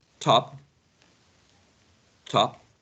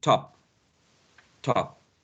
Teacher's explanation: the same sound p in this word, top, top, no aspiration